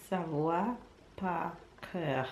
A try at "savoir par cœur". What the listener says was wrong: Savoir. There's an R at the end. Par. There's an R at the end. There's an R at the end of the three word. Savoir par cœur. Savoir par cœur.